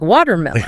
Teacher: >> But the pronunciation, that T in water in American English, it's often not a hard T. We call it a flapped T or like a fast D sound. Your tongue just taps real quick.